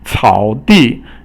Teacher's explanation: 草 is third tone, and 地 is fourth tone.